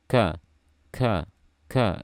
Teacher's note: huruf kaf, sifatnya syiddah. Jadi melepaskan makhraj dengan mengeluarkan suara berbarengan.